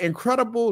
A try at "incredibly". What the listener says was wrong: Incredibly. No, you said incredible.